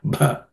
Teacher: this bha is the fourth letter in the pa class of consonants, pa varga consonants. It has to be aspirated.